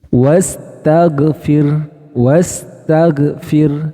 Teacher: nah kesalahan apa yang sering terjadi pada kata ini ini yaitu tertahannya suara saat mengucapkan huruf ghain sukun